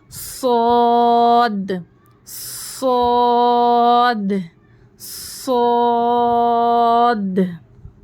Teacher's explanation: اب دیکھیے صاد حرف مستعلیہ ہے تو اس کو موٹی آواز سے پڑھیں گے